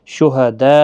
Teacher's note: یہاں پر مد متصل ہے جس کو 4 الف کی مقدار کے برابر کھینچ کر پڑھیں گے